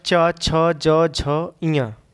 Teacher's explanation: च, छ, ज, झ, इया तालु से बोला जाता है।